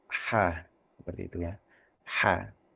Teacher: kita menggunakan makhraj atau daerah tenggorokan tengah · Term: huruf H